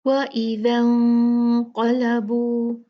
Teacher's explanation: نون ساکن ہے، اس کے بعد قاف ہے، تو یہاں پر ہم اخفا کریں گے اور اخفا یہ موٹا ہوگا، اور اس کے بعد قاف ہیوی ہے